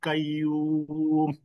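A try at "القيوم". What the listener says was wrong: তো এখানে দুটো বিষয় আছে, আল্লাহ না, ওইটা হবে ল। আর কাইয়ুম না, এটা কয়ুম। যেখানে টান আছে ওইটা দেখে দেখে।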